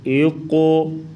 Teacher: قوف کو پر پڑھیں گے یعنی موٹا کریں گے اور قلقلہ کریں گے